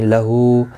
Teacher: ہا کے الٹا پیش ہے، ایک الف کی مقدار کے برابر کھینچ کر پڑھیں گے